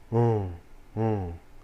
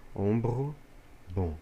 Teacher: é um som de o sempre aberto Ou seja ó nasalizado